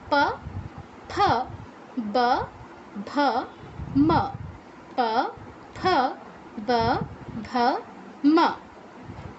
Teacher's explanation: এখানে কিন্তু ফ হবে না, ফ হবে না, দাঁত আর ঠোঁটের ব্যবহার হবে না। ফ, প যেভাবে বলছি, একবার বন্ধ একবার অন।